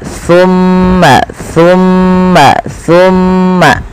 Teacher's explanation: ujung lidah kita nempel dengan gigi seri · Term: Sa